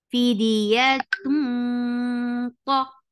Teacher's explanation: ta is short, and sound is heavy. Ah, two counts long.